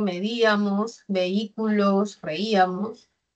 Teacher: El acento se ubica en la antepenúltima sílaba, lleva tilde, no por la esdrújula, sino porque hay un hiato acentual.